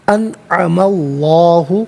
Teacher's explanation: اسم اللہ کی حرف لام سے پہلے والے حرف میم پر زبر ہے، تو زبر یا پیش ہو تو حرف لام کو پر پڑھتے ہیں، زیر ہو تو باریک پڑھتے ہیں، تو یہاں اسم اللہ کی حرف لام کو پر کر کے پڑھیں گے